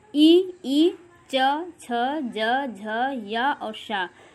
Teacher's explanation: इनको उच्चारण करते समय हमारी जीभ जो है तालु को टच करती हुई है, इसलिए इनको तालव्य ध्वनियाँ कहते हैं।